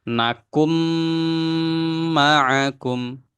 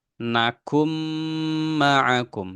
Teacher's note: Nah, di sini contohnya nakun. Nunnya sukun ketemu mim ya. Maka dilewatkan huruf nunnya langsung masuk ke mim. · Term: idgham